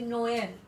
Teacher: it creates a bifurcation between O and E.